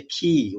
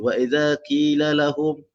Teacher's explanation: So qaf huruf dia isti'la, tetapi bila berbaris bawah dia ada satu lagi sifat nama dia infitah.